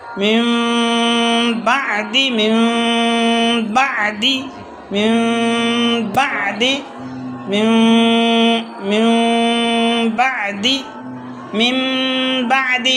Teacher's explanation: دونوں ہونٹوں کے خشکی کے حصے کو ملا کر خیشوم سے ایک الف کے برابر اخفا ظاہر کر کے، اخفا کی آواز ظاہر کرنا، اخفا کی آواز بولوں میں، ہاں نکالنا مطلب، ہاں ایک الف غنّہ کرنا، اخفا کرنا خیشوم میں. ہاں تو ہونٹ کھلنے سے پہلے ہونٹوں کو دبا لینا تاکہ تری کا حصہ لگ جائے، با کا مخرج لگ جائے، اور تری کے حصے سے با نکالنا.